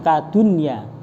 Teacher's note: maka harus dibaca izhar, tidak dibaca idgham bi gunnah